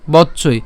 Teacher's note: এরপর বচ্চই, এখানে আমরা যেটা উচ্চারণ করছি খেয়াল করুন, আমরা বচ্চই অর্থাৎ একটা চ প্রথমে উচ্চারণ করছি বচ, এরপরে উচ্চারণ করলাম কি চই